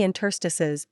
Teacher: complicated tax law Etc the pronunciation of interstice is slightly unusual you might not guess that it's accented on the second syllable